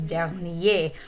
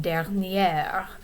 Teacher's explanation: the adjective that describes last weekend is dernier with a silent r at the end